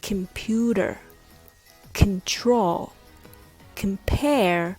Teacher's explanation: like can can content other words like computer control compare all has the first syllable reduced so it's not pronounced as khan it becomes ken